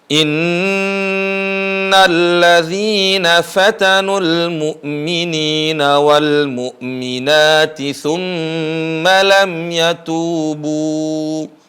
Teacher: ada Nun tasdid dan Mim bertasdid di kalimat in ditahan